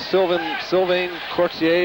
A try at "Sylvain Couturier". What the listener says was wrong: Sylvain Couturier, yeah. Sylvain Couturier. It's the R. We pronounce the R more than you guys.